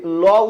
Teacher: হচ্ছে পার্শ্বিক ব্যঞ্জন অর্থাৎ পার্ষিক ব্যঞ্জন হচ্ছে এমন ব্যঞ্জন যেই একজন উচ্চারণের সময় বাতাস জিহ্বার দুই পার্শ্ব দিয়ে বের হয়ে যায়